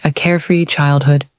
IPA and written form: ə ˈkeə.fri ˈtʃaɪld.hʊd (a carefree childhood)